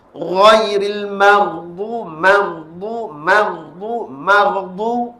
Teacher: dia tidak ada sifat syiddah dia sifat rakhawah iaitu suara yang lembut istilah dalam bahasanya tetapi dalam istilahmut tajwid ialah suara yang dilepaskan